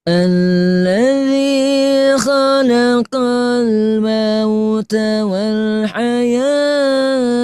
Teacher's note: Kalau nafasnya tidak sampai, nah berarti Ibu boleh dipotong pada wal hayata. Tapi taknya disukunkan ya. Jadi wal hayah.